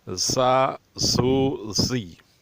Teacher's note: اس طرح ادا کرنا چاہیے کہ اسے سیٹی سی آواز نکلے، سیٹی جیسی آواز نکلے تو یہ بہت اچھا ہوگا۔